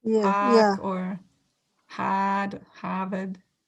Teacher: in Boston, you hear a lot of people don't pronounce R